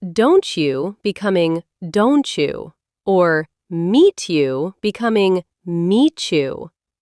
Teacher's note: If a word ends in a t and the next one starts with a y, they turn into a ch sound.